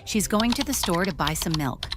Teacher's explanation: the stressed words are going store, buy, and milk. Everything else is quieter and faster.